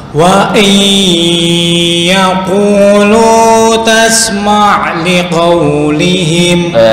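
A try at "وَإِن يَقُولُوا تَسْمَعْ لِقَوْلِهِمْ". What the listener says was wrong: Sebentar, untuk qaf enggak perlu kayak kecekek. Wa iyyakulu enggak biasa. Wa iyyakulu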